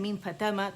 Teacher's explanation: جب آپ کہتے ہیں نا میم فتح ما، تو آپ دیکھیں میم کے لیے آپ کے سمجھ لیں دونوں ہونٹ کھلے ہوئے ہیں اور یہاں جبڑا بھی کھلا ہے اور زبان ریسٹنگ پوزیشن میں، ٹھیک ہے. اور آواز ایک کاؤنٹ کے لیے اوپر گئی، سمجھ آیا.